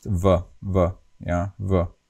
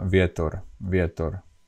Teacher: In Slovak, the V is pronounced very mildly with loose lips. You don't bite, you don't round your lips, you just pronounce V, V, yeah, V.